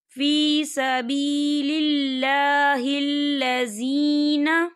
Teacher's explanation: یہاں پر یا ساکن ہے اور یا ساکن سے پہلے زیر ہے، تو یہاں پر یا مدہ ہو رہا ہے، تو ہم اسے دو حرکت کی برابر کھینچ کے پڑھیں گے۔